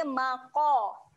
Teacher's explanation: Qaf adalah huruf yang tebal. Okey, ketika qaf berbaris atas kita bunyikan dengan qo. Qa, bunyi dia maqo.